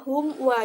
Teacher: bacaan idhar syafawi, di mana ada mim sukun bertemu dengan wa dan dibacanya itu jelas